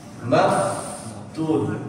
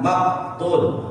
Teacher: Fa yang bersukun dia harus ada udara keluar